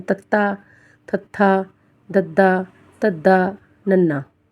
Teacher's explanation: ਇਸ ਧੁਨੀਆਂ ਨੂੰ ਉਚਾਰਨ ਸਮੇਂ ਜੀਭ ਦਾ ਅਗਲਾ ਹਿੱਸਾ ਦੰਦਾਂ ਨਾਲ ਜੁੜ ਕੇ ਬੋਲਿਆ ਜਾਂਦਾ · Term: ਦੰਤੀ